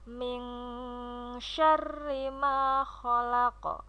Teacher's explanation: ada nun sukun bertemu dengan huruf shin. Dalam ilmu tajwid disebut dengan ikhfa, dibacanya samar. Untuk yang kedua ada huruf qaf yang diwaqafkan, disebut sebagai qalqalah kubro.